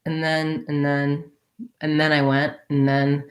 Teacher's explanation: like and then and then and then i went and then we do leave off that d and the th is a little rougher right i'm not saying and then i'm saying and then and